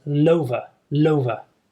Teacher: because the L is a consonant sound it's at the end of the word and the beginning of the next word is a vowel so we get linking